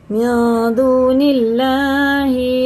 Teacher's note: अल्लाह का नाम ज़ेर से होगा तो बारीक जैसा लिखा वैसे ही पढ़ेंगे